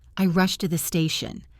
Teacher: Rushed ends in ed, but it sounds like T. Rushed becomes rusty.